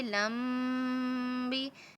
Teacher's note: میم ساکن با آ جائے وہاں پہ بھی غنہ ہوتا ہے